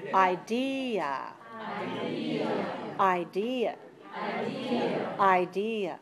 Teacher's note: can you hear a weak vowel that's very short reduced very weak · So the second syllable is strong, and that's the stressed one. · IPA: /ə/